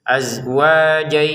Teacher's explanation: Ganti hukum tanwin bertemu ya dimasukin dengan dengungan azwajayya. Jadi didengungi dulu dua harakat baru ke ya gitu ya.